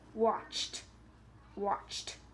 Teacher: ch is also unvoiced no vibrations in the vocal cords